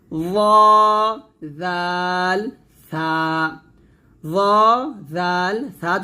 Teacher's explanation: জিহ্বার আগা সামনের উপরে দুই দাঁতের আগার সঙ্গে লাগিয়ে পাতলা করে জাল এবং উচ্চারণ করতে হয়